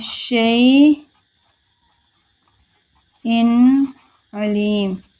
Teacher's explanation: ظاہر کر کے پڑھنا، آواز کو ناک میں نہیں چھپائیں گے، غنہ نہیں کریں گے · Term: اظہار